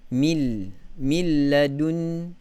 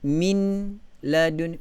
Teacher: Okey, mil, nun mati. Mil, langsung tidak ada huruf nun. Terus pergi kepada makhraj huruf lam. Mil. Okey, nun itu seolah-olah telah dihazafkan, bukan lagi disembunyikan, tetapi langsung tiada, kerana idgham bermaksud memasukkan huruf nun kepada huruf idgham yang selepasnya.